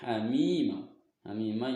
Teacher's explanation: huruf mim berharokat kasroh bertemu ya sukun dan setelahnya tidak bertemu hamzah, maka dipanjangkan, yaitu 2 harokat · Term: mad tabi'i